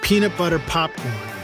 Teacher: hand in front of your mouth and say peanut butter popcorn feel that blast of air on your hand that will cause a terrible sound on your microphone called the plosive